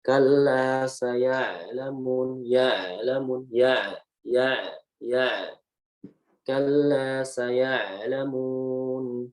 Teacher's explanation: Jadi huruf ainnya ditipisin. Ya, huruf ainnya ditipisin, ya disempitin tenggorokannya